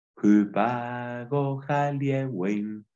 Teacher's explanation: tiene un sonido fuerte, como aspirado al principio de la palabra